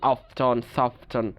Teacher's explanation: কারণ ফ, ফ বলতে গেলে জিহ্বা আমাদের উপরের দাঁতের সাথে লাগছে, বা ঠ এবং ন, ঠ, ন, জিহ্বা সরি, ফ বলতে গেলে আমাদের নিচের ঠোঁট উপরের দাঁতে লাগছে। আবার ঠ এবং ন আমাদের কি হচ্ছে, দাঁতের দাঁতের যে মাড়ির গুড়ি, ওইটা আমরা কি করছি, জিহ্বার সাথে ব্যবহার করছি।